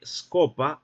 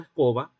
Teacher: Para que de scopa se haya pasado a escoba, no únicamente ocurrió la sonorización del oclusivo bilabial sordo, sino que además ocurrió otro proceso llamado prótesis